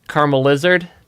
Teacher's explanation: the L merges together with my accent for whatever reason yeah if I say caramel it sounds separate but if I say caramel lizard I only have one l sound in there for whatever reason and so it sounds like Karma lizard and